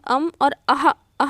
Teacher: ह जैसे हम अम और अहा बोल रहे हैं तो वो कंठ से निकल रहा है